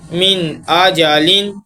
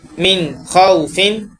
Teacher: نون ساکن اور تنوین میں بغیر غنہ کیے پڑھیں گے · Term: اظہار